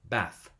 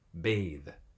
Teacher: when it's voiceless, represents the noun form, and when there's a verb form, we voice it. We use the distinction between voiced and voiceless verbs to contrast nouns and verbs.